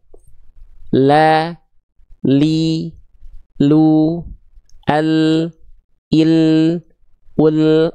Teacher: Dari tepi lidah bagian depan kiri menyusur sampai ke ujung lidah, dan tepi lidah bagian depan kanan menyusur sampai ke ujung lidah. Oke, jadi nggak cukup hanya nempelin ujung akhir lidah doang, betul-betul ujung lidahnya doang, karena bunyinya pun beda antara antara la dengan la. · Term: huruf lam